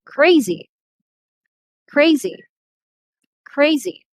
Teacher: did you notice how loud i pronounce these words and also the length the longer i pronounce the stressed syllables · the first syllable receives the stress